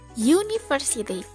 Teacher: huruf u Tapi ketika diucapkan dalam bahasa Inggris bunyinya menjadi University pengucapan huruf awalnya adalah Ye bukan uh yang mana huruf y merupakan consonant Sounds